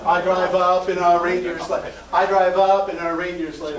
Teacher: stay on the vowel sound put the p on the next word